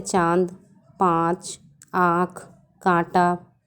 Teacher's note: चंद्रबिंदी इसे अनुनासिक कहते हैं। इसका उच्चारण नाक और गले दोनों से होता है।